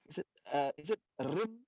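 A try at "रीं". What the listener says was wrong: No, it's still not clear. trying to say rim? Rim, yeah, rim, rim. It's actually the longer vowel, right? rim, not rim. Rim will not have this extension. rim, and then on top of it a dot, so it becomes rim, right? Rim, right?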